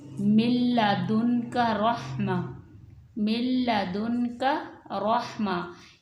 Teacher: نون ساکن کو ہم نے لام میں مدغم کر دیا ہے، تو میم جب ہم پڑھیں گے تو میم اور لام پڑھیں گے، نون نہیں پڑھیں گے، کیونکہ نون جو ہے وہ لام کے اندر مدغم ہو گئی ہے۔ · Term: ادغام کامل